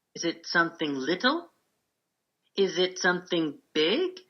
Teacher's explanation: the speaker has rising intonation her voice goes up at the top